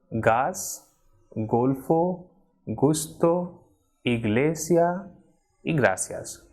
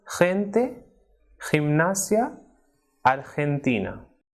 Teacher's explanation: when it comes before the vowels E and I, it is strongly aspirated, like H